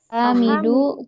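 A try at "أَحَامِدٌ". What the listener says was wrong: Ahamidun ya, bukan du. Ya. Hamid itu tanwin ya.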